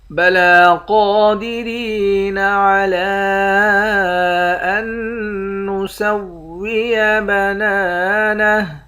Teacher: عین پر کھڑا زبر ہے، کھڑا زبر کے اوپر مد ہے، اس مد کو 3 الف کی مقدار کھینچ کر پڑھتے ہیں۔ · قاف کو موٹا پڑھیں گے، قاف کے بعد الف ہے، الف کو بھی 1 الف کی مقدار کھینچ کر پڑھیں گے۔ را کو یا کے ساتھ ملا کر یا کو 1 الف کی مقدار کھینچیں گے، یا حروف مدہ ہے۔ · نون مشدد پر غنہ کریں گے، حمزے کو تشدید والے حرف کے ساتھ ملا کر پڑھیں گے، جزم والے حرف کے ساتھ ملا کر نہیں پڑھیں گے۔ نون کے بعد الف ہے، 1 الف کی مقدار کھینچیں گے، آخر میں ہا ساکن ہے۔